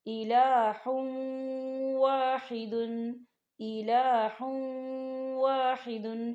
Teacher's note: غنہ ہوگا اور ہا کے اوپر جو تنوین ہے اسے ہم واو کے اندر مدغم کریں گے